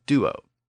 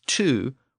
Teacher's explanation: under Grim's law the D sound became a t sound in the Germanic languages